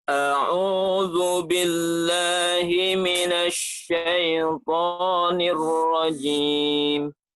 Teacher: untuk ar-rajimnya udah ada getaran sedikit. Udah ada getaran, tapi bunyi tebalnya masih belum muncul. Kalau ainnya masih terdengar bunyi ke hidungnya dan domahnya masih belum sempurna.